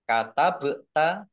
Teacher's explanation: dibaca memantul ditampakkan pantulannya